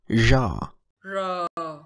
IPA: ʐ